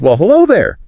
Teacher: putting extra emphasis on hello to show her surprise